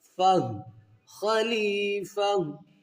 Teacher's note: यहाँ पर स्टॉप करेंगे तो फा को जैसे कि हा के साथ मिलाना है, इस हा को साकिन कर देंगे